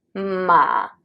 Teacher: This is the lowest range of your voice. Try to add some creakiness. Imagine that you are so sad that you're like ma. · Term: half third tone